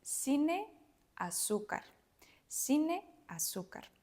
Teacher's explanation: if we're talking about the Latin American Spanish, these letters will sound like s. So the first one like se, and the last one zeta, se, zeta.